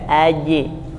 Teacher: Jadi bukan AJ tapi AJ AJ ya jadi bunyinya menempel AJ Tengah lidah menempel langit-langit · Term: Jim